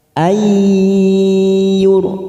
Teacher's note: Nun sukun bertemu ya idgham bi gunnah. Kita tekan 3 ketuk siap masuk pada huruf ya.